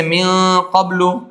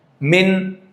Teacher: یہ آپ وصل کریں گے تب اخفا ہوگا، اب بیچ میں وقف کریں گے تو من، اب اظہار ہوگا